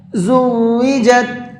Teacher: واو پہ تھوڑا سا رکنا ہے، تشدید ہے، زُوِّجَتْ نہیں پڑھنا ہے، زُوِّجَتْ۔